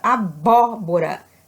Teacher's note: porque a sílaba tônica caiu na antepenúltima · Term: proparoxítona